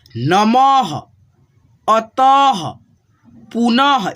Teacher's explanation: जैसे यहाँ पे देखो न है, म के आगे दो विसर्ग है, तो आपको बताया हूँ कि विसर्ग को ह के रूप में उच्चारण कीजिएगा।